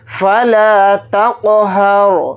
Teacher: کو قاف ساکن کے ساتھ ملا کر پڑھیں گے اور تا قاف کے اوپر جزم ہے تو قاف کے اندر قلقلہ کریں گے کیونکہ قاف حروف قلقلہ میں سے ایک حرف ہے۔ ہا کو · رائے ساکنہ سے پہلے ہا کے اوپر زبر ہے تو رائے ساکنہ کو موٹا یعنی پر پڑھیں گے